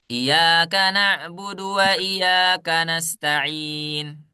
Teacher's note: kita sudah menghilangkan yang namanya tasdid sementara tasdid itu adalah huruf yang ada dua yang satunya sukunak